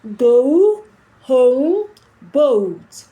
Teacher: This is a schwa sound. There's a combination of the schwa sound and the U sound. So it's going to be U, U.